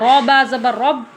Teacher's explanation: را کو موٹا کر کے پڑھیں گے، را کے اوپر زبر یا پیش ہو تو را پر ہوتی ہے۔